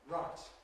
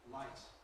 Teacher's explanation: R involves median escape of air. That's down the midline whereas the L involves the lateral escape of air of the sides. If you have your tongue in the position for an R sound and then suck in You should feel cold in the middle.